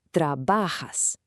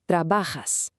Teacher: you put the stress on the second to last syllable